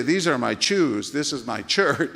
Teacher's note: I had a heavy Mexican accent because in Spanish there is no SH sound